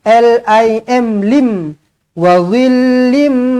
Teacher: tanwin tak selari bertemu dengan mim sabdu idgham maal ghunah rapatkan lagi bibir dengungkan dengan dua harakat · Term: idgham ma'al gunnah